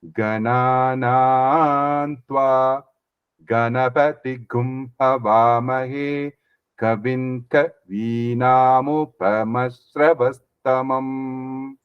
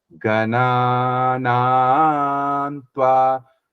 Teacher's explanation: It's only that vowel which has this. So I am not changing the matra. Like for example, ga is still ga. Na is still na. So I'm just changing the pitch.